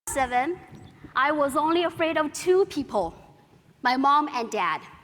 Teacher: the speaker used partial falling intonation in the sentence when i was seven i was only afraid of two people my mom and dad